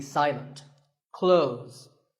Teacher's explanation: when we say clothes the th in the middle can often be silent